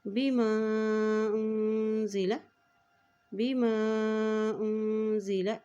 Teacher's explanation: हमज़ा के ऊपर मद है तो इसको लंबा अदा करते हुए पढ़ेंगे। बिमा उन्ज़िला, बिमा उन्ज़िला इलैहि मिर रब्बिही।